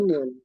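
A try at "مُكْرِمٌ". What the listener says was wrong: muk, mukrimun. Ingat pakai domah ya.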